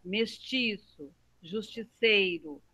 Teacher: eles são exemplos de palavras a sílaba forte é no meio